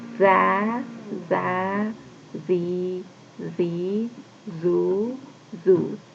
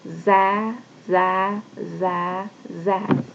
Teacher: za is a thick letter, so in order to pronounce it we use our full mouth